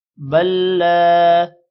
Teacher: ہے تھوڑا سا لمبا کریں گے بل لا اب یہاں پر 2 لام آ رہے ہیں لیکن ہم اس لام کو پڑھیں گے جس کے اوپر شد ہے بل لا اس لام کے بعد الف ہے تھوڑا سا الف · اس لام کے بعد الف ہے تھوڑا سا الف کو لمبا کریں گے 1 سیکنڈ